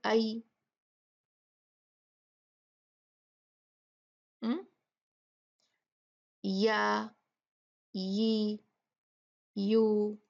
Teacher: आप देखेंगे जुबान में बहुत बड़ा गैप है, यहाँ पर बिल्कुल टच नहीं हो रही तालू से। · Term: या गैरी मद्दिया